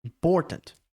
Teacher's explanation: palavra como important or é a sílaba mais forte e aí o in e o tant que são as duas outras sílabas elas ficam com muito pouca ênfase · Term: sílabas plosivas